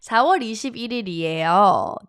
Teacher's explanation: you're hearing bil instead of il is because of the carryover sound in batchim going to the next door